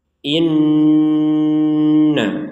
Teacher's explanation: nun bertasydid. Harus kita dengungkan 100%. Inna. Jadi di rongga hidung kita harus berdengung 100%.